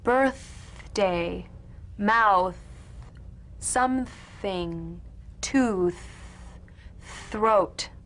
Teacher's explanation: The unvoiced tongue point to teeth fricative consonant. Play this dry, gentle, whispered, lightly and softly, without the slightest pressure. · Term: voiceless TH